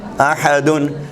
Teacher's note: یہ نون اصل میں تنوین کا نون ہے جو اپنے مابعد کے لفظ کے ساکن حرف سے ملنے کے لیے زیر دے کر ملا دیا جاتا ہے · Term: نون قطنی